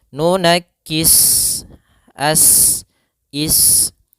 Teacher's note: Maka cara membacanya sempurnakan daripada desisan huruf sin, yaitu nafas kita mengalir dan ada sifat, dia sifat shafir. Ya, shafir itu adalah seperti desisan suara burung.